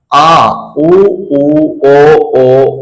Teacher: पश्च स्वर यानी जीभ के सबसे पिछले भाग से